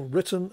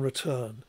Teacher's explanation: The phonetically they're almost identical, but they are distinguished in terms of the lexical stress. So written has a stress, an emphasis on the first syllable, whereas return has an emphasis or stress on the second syllable.